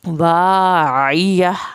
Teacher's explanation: आइन को हल्क से पढ़ेंगे, आखिर में हा की आवाज़ निकलेगी।